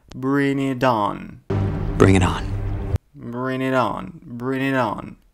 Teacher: И ударение сделал на последнюю букву O. · То есть, видите, я букву T заменил на букву D.